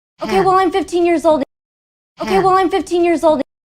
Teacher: So her pitch is higher, her speech is a lot faster, showing emotion here.